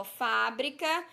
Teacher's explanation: na sílaba fa nós temos o acento agudo e pronunciamos pronunciamos com mais intensidade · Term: sílaba tônica